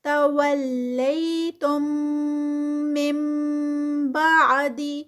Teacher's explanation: نون ساکنہ کے بعد جب با آتی ہے تو یہاں پر اقلاب آتا ہے، یعنی اس کو نون کو سکپ کر دیا جاتا ہے اور سیدھا جو ہے وہ میم پڑھی جاتی ہے، نون نہیں ہوتا، نون کو ہم نہیں بولتے ہوتے.